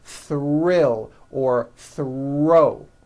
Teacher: When producing these blends, I want you to be aware that the R is the strongest sound of the blend and is louder than the TH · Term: THR blends